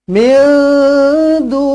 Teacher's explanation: Nun kosong bertemu dengan dal, ikhfa hakiki, dengungkan 2 harakat.